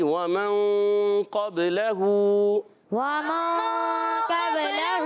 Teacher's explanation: قاف زبان کی جڑ تالو کے نرم حصے سے قاف ادا ہوتا ہے